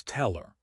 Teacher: In unstressed pronouns like him, her, and his, we often delete the H if the word is in the middle of a sentence. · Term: H deletion